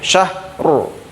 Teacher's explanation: kemudian ro-nya ro sukun tebal, syahru, seperti itu, syahru.